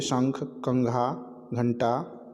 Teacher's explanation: इन शब्दों का उच्चारण करते समय वायु केवल नाक से निकलती है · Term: अनुस्वार